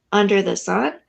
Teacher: But that changes in the next line, under the sun, because instead of having unaccented and then accented, it becomes accented with under